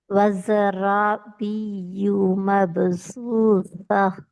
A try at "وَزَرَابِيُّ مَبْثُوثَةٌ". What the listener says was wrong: பியு பியு சத்த உச்சரிக்கணும். பியு. பியு பியு. வஸரா. பியு. பியு பேல நீட்டுப்படுது. பியு. சா அல்ல, மபுசூச. நாக்கு வெளியே வரல. மபுசூ தான் வருது. நாக்கு வெளியே வரணும். மபுசூச.